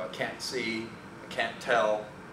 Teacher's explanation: for at least American speakers, the word can't, when followed by a verb that begins with a consonant, the T is pronounced as a glottal stop.